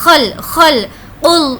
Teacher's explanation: اس خا کو تھوڑا کھرکھرا پڑھیں گے